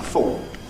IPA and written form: fɔːt (thought)